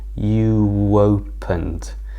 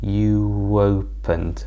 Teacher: a linking sound where we push two words together, like you opened. Can you hear? There's a little w there.